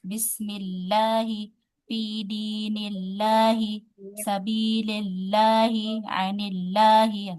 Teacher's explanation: Semuanya dibaca tipis. Kalau lafaz Allah huruf sebelumnya huruf berharakat kasrah.